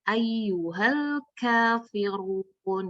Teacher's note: pada saat ayyuhal itu jangan dilepas Bu. Nanti kalau dilepas jadi ayyuhale. Nah itu nggak boleh, itu namanya tawasud.